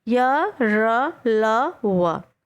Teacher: इनका उच्चारण जिह्वा, तालु, दांत और ओंठों के स्पर्श में से होता है, परंतु यह स्पर्श पूरा नहीं होता है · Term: अंतस्था व्यंजन